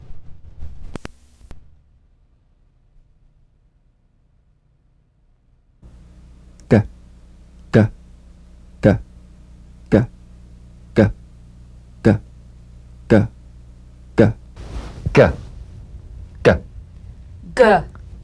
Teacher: The voiced tongue back plosive consonant G. Place the back of the tongue in gentle contact with the soft palate.